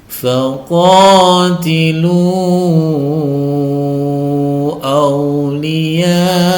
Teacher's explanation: ketika kita disambung maka lnya menjadi empat harakat